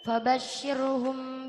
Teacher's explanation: ra tarkik sebab ra sukun didahului kasrah